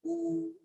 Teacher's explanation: kalau vokal yang dhammah dimanyunkan u